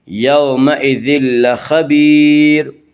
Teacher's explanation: لام را میں ادغام بلا غنہ ہوگا، یعنی غنہ کے بغیر ہوگا، اور یہاں تنوین کے بعد لام اس لیے یہاں پہ ادغام بلا غنہ ہوگا، یعنی اس میں غنہ نہیں کریں گے۔ · خا کو پر پڑھیں گے، خا حروف مستعلیہ میں سے ہے، حروف مستعلیہ 7 ہیں جن کا مجموعہ خصہ ضغط قز ہے، جو ہمیشہ ہر حال میں پر پڑھے جاتے ہیں۔